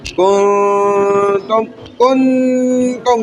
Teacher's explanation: नाक में आवाज आ रही है। नून छुप रहा है। इफा हो रहा है।